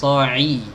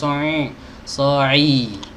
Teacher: So'i, keluar dari tenggorokan bagian tengah. So'i, bukan dari hidung.